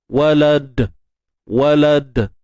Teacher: untuk dal bila kita waqaf padanya, pastikan ada sifat qalqalah lah. Jadi kat sini qalqalah kubra, sebab kita berhenti kan. Jadi pastikan lantunan kita ni tidak berlakunya bunyi seperti hamzah yang mati lah.